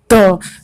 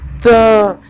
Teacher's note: त वर्ग का उच्चारण दंत से होता है।